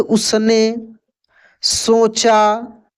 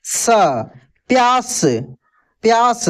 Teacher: और बाकी जब जो स देख रहे हैं आप, जैसे उसने, सोचा, जहां जहां पे आपको मिल रहा है, ये दोस्तों दंत स है, ठीक है ना, इसका ध्वनि दांत से निकलता है